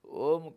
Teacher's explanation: म का अनुसार के रूप में म का आधा उच्चारण करते हैं, नाक से उच्चारण होता है, बाकी मुँह से होगा। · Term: अर्धमात्रा